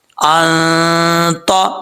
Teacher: نون ساکن کے بعد تو آ رہا ہے حروف اخفا میں سے، تو یہاں پہ نون ساکن کا اخفا کیا جائے گا